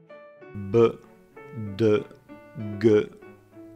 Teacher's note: voiced ones, with vibration of the vocal cords